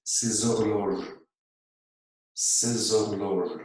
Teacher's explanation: Ook hier hebben we een doffe H. Dus die wordt niet uitgesproken en dan lijkt het alsof er een klinker volgt.